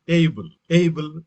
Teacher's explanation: the stress is on first syllable